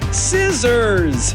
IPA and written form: ˈsɪz.əz (Scissors)